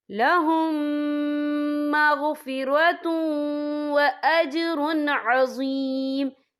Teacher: والا حرف آ رہا ہے، تو یہاں پر ادغام شفوی ہوگا، تو ہم پچھلے میم کو اگلے میم میں مدغم کریں گے اور ہم یہاں غنہ بھی کریں گے